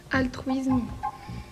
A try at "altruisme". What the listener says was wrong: Un S avant une consonne se prononce S et non Z. Je crois qu'on a répondu Z des deux côtés.